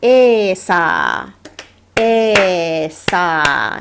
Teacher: So for example, if I wanted to write the word esa, esa, and both the e and the sa are long